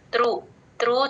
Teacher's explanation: త్రు త్రు చాలా తేలిగ్గా చెప్పాలి అస్సలు స్ట్రెస్ ఇవ్వకూడదు